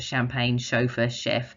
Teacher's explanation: ch can also say the sh sound and most of those words are french in origin